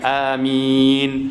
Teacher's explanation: min tu kita panjangkan dia, boleh sampai 6 harakat.